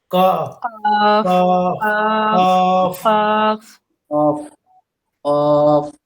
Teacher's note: ৪ number মাখরাজ জিহ্বার গোড়া তার বরাবর উপরের তালুর সঙ্গে লাগাইয়া ২ নুক্তাওয়ালা কফ